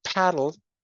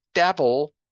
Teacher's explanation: the P in paddle is aspirated. So you get paddle but the P in double is not aspirated.